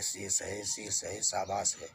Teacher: जब जीभ तालु से सटती है तो हम बड़ा सा का प्रयोग करते हैं।